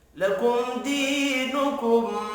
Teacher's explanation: मीम साकिन के बाद दाल है, इजहार शफी होगा, गुन्ना नहीं होगा। दी या मद्दा है, एक अलिफ के बराबर खींच कर पढ़ेंगे।